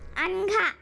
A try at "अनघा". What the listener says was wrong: अनघा नहीं बोलना, अनघा बोलो। हाँ न पूरा बोलना, अनघा नहीं, अनघा बोलो।